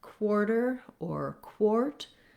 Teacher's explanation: And then the other place this happens is when we have the letter A with the QU, because QU is really a K and a W sound together. So we still have our WA combination here.